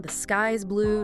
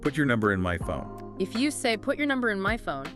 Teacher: The pitch drops at the end of the sentence. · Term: falling intonation